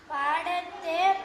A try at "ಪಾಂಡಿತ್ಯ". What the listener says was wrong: ಪಾಂಡಿತ್ಯ ಇದು ಸೊನ್ನೆ ಮುಗಿಲು ಉಚ್ಚಾರ ಆಗುತ್ತಾ